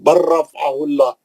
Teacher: र पे तदीद आ जाती लाम चले जाता